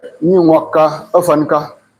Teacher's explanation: You hardly hear the N.